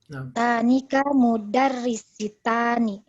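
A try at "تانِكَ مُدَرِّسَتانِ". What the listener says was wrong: Mudarrisatani itu salah Ibu, itu mudarrisatani, itu salah harakat itu.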